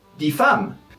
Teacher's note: /di/ when there's a consonant afterwards